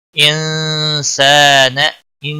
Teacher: نون ساکن کے بعد حروف اخفا کا سین آیا ہے، اخفا حقیقی ہوگا